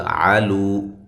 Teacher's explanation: لو و مدہ ہے، عین کو واضح نکالنا ہے